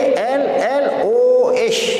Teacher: Dia kena baca tafkhim, dia kena baca terbaik. Bunyi dia ALLOH.